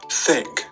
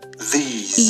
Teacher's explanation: the tongue touches the upper teeth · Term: dental